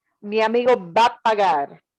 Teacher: That little word a sounds like a very fleeting thing, but it must be there. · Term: fast transition